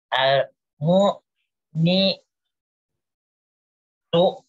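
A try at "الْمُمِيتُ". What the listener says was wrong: Ya bagus, tinggal mi-nya itu. Al-mu'mitu. Bukan ni, mi-mi.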